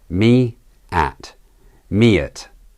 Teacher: Notice the intrusive y.